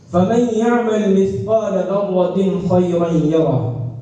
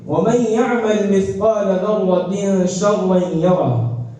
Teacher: یہاں تنوین کے بعد شین ہونے کی وجہ سے ایک الف کے بقدر غنہ ہوتا ہے ، لہذا اس کے پڑھنے میں تاخیر ہوتی